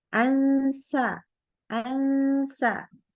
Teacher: Lidahnya nggak boleh ketemu sama langit-langit ya. Beda kayak sama huruf nun.